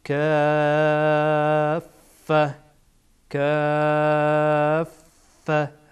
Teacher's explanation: مد لازم هم مثل مد متصل هست به اندازه چار الی ۶ حرکت آن را طولانی می‌کنید